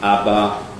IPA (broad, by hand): ɑbɑ